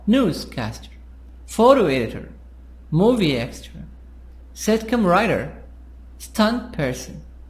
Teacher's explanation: we'll make the sound higher, louder, and longer on the first part. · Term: stress